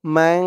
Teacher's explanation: এখানে ইকফা গুন্না করতে হবে কারণ নুন সাকিনের পরে ইকফার হরফ যা আসছে মিম নুন জবর মাং এরকম গুন্না মানহা যা দিয়ে কাফ ধরবে